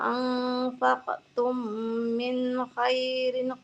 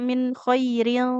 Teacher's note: Jadi ikhfa dia samar ya langsung masuk ke hurufnya